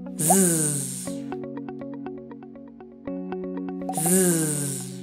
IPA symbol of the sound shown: z